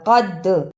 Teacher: دال پر قلقلہ کرنا ہے اس لیے کہ دال پر جزم ہے، اور قاف کو موٹا پڑھنا ہے